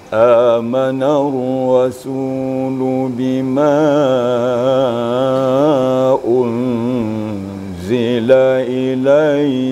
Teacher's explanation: lagu Bati diawali dengan suara rendah misalnya Biasanya kalau suara rendah nafas kita juga agak pendek jadi